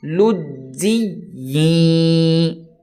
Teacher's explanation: یا کو یا کے ساتھ ملائیں گے اور پھر غنہ کر کے پڑھیں گے، تھوڑی دیر کے لیے ناک میں آواز کو روکیں گے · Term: ادغام مع الغنہ